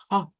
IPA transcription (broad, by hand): h